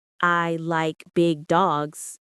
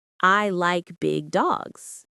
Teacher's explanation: For example, I like big dogs. The stress is on like and dogs. Not on I or big.